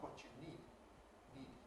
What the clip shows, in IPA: niˑd